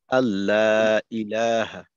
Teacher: হামজাকে একটু শক্ত করে উচ্চারণ করা যেন হামজা তাসিল না হয়ে যায় হামজা বিতাহকিক একটু শক্ত করে আল্লাহ ইলাহ এভাবে হবে আর কি